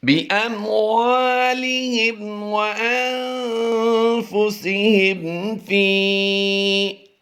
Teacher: یاد رہے حمزہ میم زبر ام کی ادائیگی میں، پھر ہاں میم زیر ہم کی ادائیگی میں، اور پھر لاسٹ ٹائم میں بھی ہاں میم زیر ہم کی ادائیگی میں پایا ہے۔ تینوں ہی میں غنہ نہیں کریں گے، یہاں پر اظہار شفوی ہوتا ہے